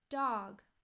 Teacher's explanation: you see those triangles pointing at each other that indicates length so even though this is called a short vowel it's actually a longer sound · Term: short o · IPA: /ɑː/